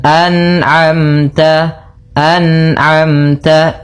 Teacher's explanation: ada bacaan izhar halqi, yaitu adanya nun mati bertemu dengan ain. Maka hati-hati dalam melafalkan huruf atau bacaan an'amta, jangan sampai terpantulkan misalkan an'amta alaihim, an'amta memantul huruf nun-nya karena sifat nun tidak boleh mantul.